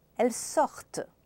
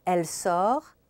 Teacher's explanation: So you hear the T in the plural, you don't hear it in the singular, and the T is heard in the plural because the ENT is not pronounced and the E just tells you to pronounce the T.